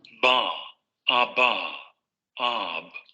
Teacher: Nuevamente la cavidad oral está despejada, pero evidentemente el bloqueo se produce aquí. Se da la liberación abrupta de aire y hay vibración de cuerdas vocales. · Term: Bilabial oclusiva sonora